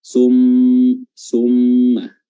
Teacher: Idgham artinya memasukkan, jadi huruf nun sukun tadi yang seakan-akan dibaca nun sukun di tanwin ini sun, kita masukkan langsung ke huruf mim dan menghilangkan sama sekali nun sukunnya, tanwinnya. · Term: idgham bi gunnah